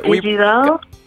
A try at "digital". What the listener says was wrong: You added the e's on the So basically, you're taking the I's and you're making them E's, right? And then the G, you're making it like an H.